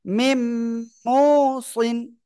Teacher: দেখেন মিম নুনজের মিন, নুন সাকিন, তারপরে কি মিম অপেশ মু, মিমের উপরে তাসদিদ। এই যে নুন সাকিনের পরে কি আসছে? মিম আসছে। তাহলে কি করবেন? আপনি গুন্নার সাথে মিলিয়ে পড়বেন, মিম মুসিন।